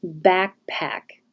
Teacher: p pack and voiced back no delay back and oh backpack the b won't have air but the p here will